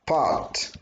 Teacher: we have a voiceless stop before that vowel so we need to apply the aspiration rule